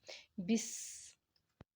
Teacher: جب ہم سین کو پڑھتے ہیں تو ایک سیٹی کی آواز آپ کو فیل ہوگی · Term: سیٹی والے حروف